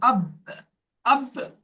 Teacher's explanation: বার মাখরাজটা দুই ঠোঁট মিলিয়ে, দুই ঠোঁটের শূন্য অংশ মিলিয়ে বা উচ্চারণ হয় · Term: কলকলা